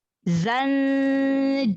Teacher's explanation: Tambahkan sifat sofir pada huruf zai seperti suara lebah